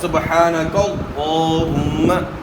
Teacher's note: اب یہاں بھی اللہم کے لفظ سے پہلے والے حرف کے اوپر زبر ہے تو اللہم کا لام بھی موٹا ادا ہوگا